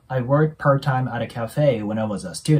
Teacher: 最後の▁t▁の音、また破裂音になるので、聞こえないことが多いですね